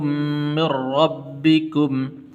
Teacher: را کے اوپر زبر ہے اس لیے پر کر کے پڑھنا ہے